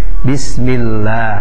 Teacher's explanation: Hukum bacanya adalah tarqiq, dibaca dengan bacaan tipis